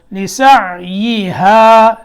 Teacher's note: ہا کو لمبا کرنا آگے الف ہے